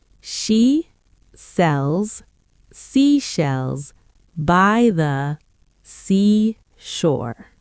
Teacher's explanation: it mixes the sh sound like in she with the s sound like in sells